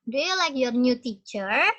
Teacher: Dan yang kedua, rising intonation and stress. Naik, intonasi dan stresnya naik. Jadi nadanya lebih tinggi.